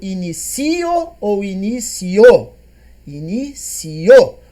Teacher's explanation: O I é menos e o O é mais. Ditongo crescente.